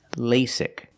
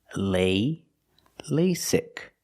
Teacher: the first vowel is a long a like say and day